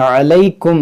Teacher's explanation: وما كان لي عليكم من سلطان، دیکھیں علیکم یہاں پر ادغام شفوی ہوگا یعنی غنہ ہوگا